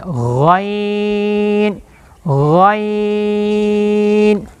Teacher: तो गैन कहां से अदा होता है? अदना हलक से अदा होता है। अदना हलक जो मुंह के करीब है इसको अदना हलक बोलते हैं। · ادنا حلق سے ادا ہوتا ہے